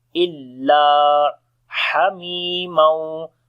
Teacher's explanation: Ha we read from the middle of the throat, and also we make the hums quality. Mi we long due to ya madda, and after the tanween the next letter is waw, we make idgham with gunna.